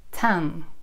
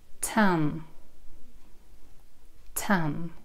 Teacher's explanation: Тоже взрывной «т» на альвеолах.